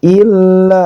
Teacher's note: ditekan kemudian panjang dua harakat